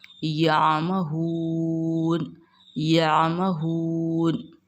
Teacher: مد عارض ہوگا، اس کو ہم 2 سے 3 الف کی مقدار کھینچ کر پڑھیں گے